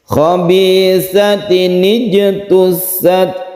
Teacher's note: ada qalqalah sugro, kita pantulkan jimnya.